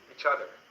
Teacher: a native speaker will take a ch sound with the O and mix it